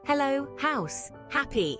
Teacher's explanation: it's not silent and it's not harsh it's a gentle breathy sound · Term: H sound